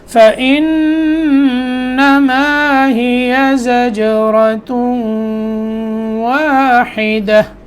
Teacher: نون میں غنہ کرنا ہے اور زا کی ادائیگی درست، جیم میں قلقلہ